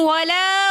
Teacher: الف مدہ ہونے کی وجہ سے ہم نے ولا ایک الف کی مقدار کھینچ کر پڑھا